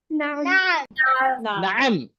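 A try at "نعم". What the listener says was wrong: Na'am. Na'am. नाम नहीं बोलना. Na'am. अरबी में बात करेंगे तो अरबों की तरह बात करना. When you speak Arabic, speak like Arabs. Ain. Na'am.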